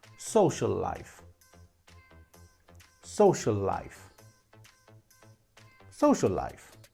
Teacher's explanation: Social finishes with a U, and life also begins with an L sound. So we say social life with one L.